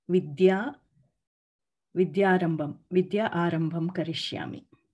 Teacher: There's no Mahapranadha, it's Alpapranadha.